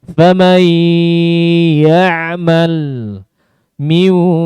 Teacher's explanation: Jadi sempurna ke hidung, padahal dia idghamnya nakis. Harusnya ada yang masuk ke hidung, ada yang masuk ke mulut. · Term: idgham nakis